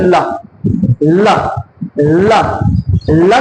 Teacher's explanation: ल के उच्चारण में आप देखेंगे जीभ किससे टकरा रही है, दांतों से। इसीलिए ल कैसे हैं आपके, दंत। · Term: दंत ध्वनि